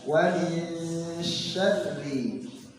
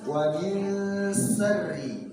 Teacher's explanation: Tapi tatkala dia fathah itu tidak ada peranan bibir karena makhrajnya di lidah. Dan dia sifatnya namanya tafasy, jadi menyebarnya udara di rongga mulut.